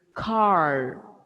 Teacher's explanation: In American English, it is like they fold the tongue inside and say car.